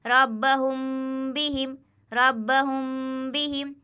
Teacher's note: ایک الف کے برابر کھینچ کر ناک سے گنہ ہو کر پڑھا جائے گا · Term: اخفاء شفوی